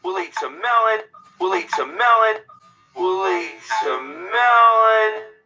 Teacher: nós temos aqui som de L emendando com a vogal will it. Se você não está ciente de que esses sons se emendam na fala, vocês vão achar que tem li, L-I, alguma coisa do tipo, L-Y, e não vão chegar nunca à conclusão do que estão falando.